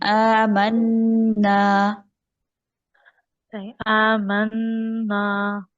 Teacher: आमना नून के बाद अलिफ है जो ड्रॉप हुआ आमना और नून के ऊपर शद है पहले तो गुन्ना होगा फिर हमने अलिफ मद्दा को प्रोनाउंस करना है आमना [संगीत] आमना